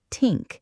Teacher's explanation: A lot of people replace it with D or T, so this sounds like dis, or think sounds like tink